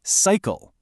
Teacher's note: The sigh is strong, right? But the cull is weak. It kind of shrinks down to this soft sound, doesn't it? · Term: unstressed syllable